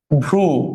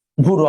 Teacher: ভ আর র এর মাঝখানে একটা রস্ব উ আসছে, তাহলে মাঝখানে যেহেতু একটা স্বরধ্বনি আসছে সেই জন্য সেটা মধ্য স্বর, মানে মধ্য স্বরাগম।